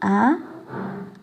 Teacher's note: आ विवृत स्वर का उदाहरण है क्योंकि आ का उच्चारण करते समय मुख पूरा खुला होता है